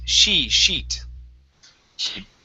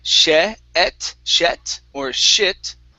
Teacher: the hard thing here is not to pronounce a short I or a short E